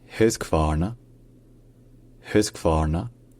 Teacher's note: Et enfin, le Q se prononce comme un K. Le premier A se prononce A, donc un petit peu en arrière de la bouche. Ensuite, le RN est prononcé ensemble, en fait. · D'abord, évidemment, le H au début est prononcé. Ensuite, le U est un son un petit peu intermédiaire entre un U français et un OU français. Et enfin, le Q se prononce comme un K.